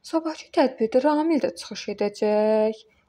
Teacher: Sonuna sual işarəsi qoyub, intonasiya vasitəsilə sual cümləsi yaradıram.